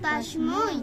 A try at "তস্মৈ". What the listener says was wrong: এই উচ্চারণটা একটু ক্লিয়ার করতে হবে যেহেতু ঐকার আছে, হ্যাঁ, তস্মৈ।